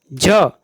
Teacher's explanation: झ का उच्चारण स्थान तालव्य है